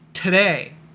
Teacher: If it's the beginning of a word, today, or if it's on the stressed syllable, pretend, then you get a regular T.